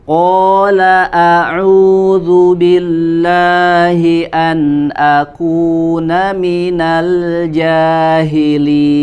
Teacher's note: Ya, jangan ada gema ketika membacakan huruf a. Jadi a suaranya tipis, posisi lidahnya itu normal ya, tidak terangkat ke langit-langit sehingga suara bisa menjadi gema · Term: huruf hamzah